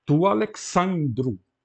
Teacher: O acento passou para a penúltima porque a última é longa.